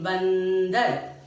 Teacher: जिन ध्वनियों को बोलते समय या उच्चारित करते समय हवा सिर्फ हमारी नाक से निकलती है उसे हम अनुस्वार कहते हैं।